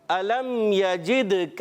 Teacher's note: دال حرف قلقلہ سے ہے، قلقلہ ادا کریں گے، آواز لوٹتی ہوئی آئے. کاف کو باریک رکھنا ہے.